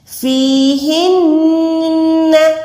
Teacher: نون پہ بھی آپ نے گننا کرنا ہے، آواز کو ناک میں لے جا کے ہولڈ کریں